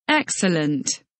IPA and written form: ˈeksələnt (Excellent)